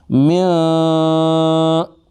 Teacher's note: ناک میں آواز، 1 الف کی مقدار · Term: غنہ